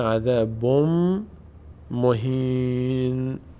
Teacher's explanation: چون بعدش میم آمده دیگه تنوین تبدیل میشه به میم